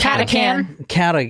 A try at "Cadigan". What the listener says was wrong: Actually, it's supposed to be a G. I think it's worn off. Cadigan. No, Cadigan.